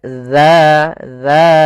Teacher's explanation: Ujung lidah kita menempel dengan gigi dari atas. Kemudian pada lafal dza sendiri ada mad thabi'i. Panjangnya dua harakat.